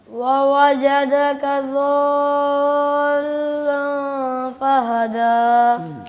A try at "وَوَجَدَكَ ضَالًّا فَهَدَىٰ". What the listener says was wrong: لام کے اوپر شد بھی ہے اور یہ مد طویل بھی ہے, دوبارہ پڑھیے گا. لام پہ شد کا مطلب یہ ہے کہ لام کے اوپر شد محسوس ہو. ضالا.